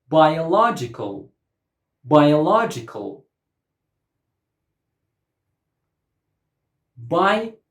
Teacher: 5 syllables and the stress goes on the third syllable.